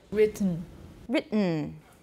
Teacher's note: in many accents of english t is replaced by a glottal stop when it occurs before an alveolar nasal in the same word